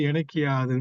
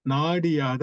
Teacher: அந்த உகரம் யகரம் வர தன்னுடைய உகரம் கெட்டு உகரம் இகரமாக திரியும் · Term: குற்றியல் இகரம்